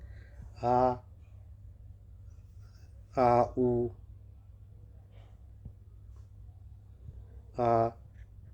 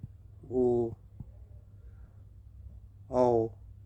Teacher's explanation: पश्च स्वर यानी जो पीछे से बोले जाते हैं वो जीभ के अंदर से यानी पिछले वाले भाग से निकलते हैं उसको पश्च स्वर बोलते हैं।